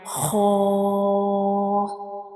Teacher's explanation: Ha is a heavy letter, and when we pronounce ha, we read it with a hard sound. The sound fills into the mouth like ha. The sound fills into the mouth when we read ha, and it is also a throat letter.